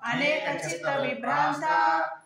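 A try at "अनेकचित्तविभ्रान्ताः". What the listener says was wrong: విసర్గ ఉన్నాయి అక్కడ లోపిస్తాయి ఇవి. అనేక చిత్త విభ్రాంతా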